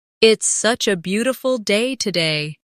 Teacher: Stress beautiful to express the feeling.